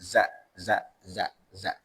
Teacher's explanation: lidahnya ketika ngomong Za Za itu yang membedakan Za sama Za kalau Za itu hanya gigi atas gigi bawah itu nyatu Za Za Za tapi kalau itu enggak menyatu gigi atas gigi